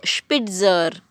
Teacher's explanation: It is Sp, Sp. Little sh for shirt and then P, Spitzer.